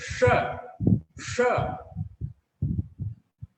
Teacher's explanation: हमारा जो तालव्य स है उसका जब हम उच्चारण करते हैं हमारी जिह्वा ताल को स्पर्श करती है